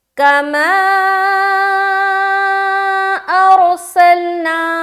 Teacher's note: اس کے بعد سین لام زبر سل، نون الف زبر نا، سلنا۔ سین کو سیٹی کی طرح ادا کریں گے جب پورا پڑھیں گے، کما ارسلنا، پھر نا میں الف مدہ بھی کر رہے ہیں ہم، کما ارسلنا۔